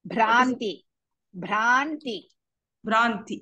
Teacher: ಭವಗ್ನಿ ಭ್ರಾಂತಿ ಭಾ ಇಸ್ ಮಹಾಪ್ರಾಣ ಅಂಡ್ ದೀರ್ಘ